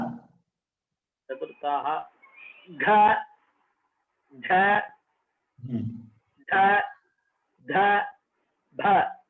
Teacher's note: घोषाः इति वर्तते खलु तर्हि तेन साकं महाप्राणोऽपि वर्गाणां ये चतुर्थाः तेषां संवारः नादः घोषः महाप्राणोऽपि